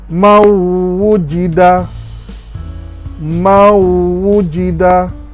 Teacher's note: Nun kita tidak sebut, terus masuk kepada waw, mau, mawujida.